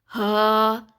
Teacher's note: حلق کا وہ حصہ جو کہ ہمارا سینے کی طرف حصہ ہے، وہاں سے یہ ہا ادا ہوگا، جہاں پہ ایک گڑا سا محسوس ہوتا ہے۔